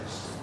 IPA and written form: mɪs (miss)